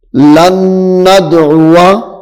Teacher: غنہ بھی کریں گے کیونکہ نون مشدد ہے